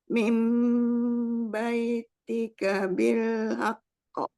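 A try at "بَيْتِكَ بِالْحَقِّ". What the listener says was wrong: Jangan di haqqo. Tidak ada hamzah sukun. Haqqo. Haqqo. dihilangin hamzah sukunnya aja, tidak haqqo, jangan ko tapi ko saja. Haqqo. Haqqo.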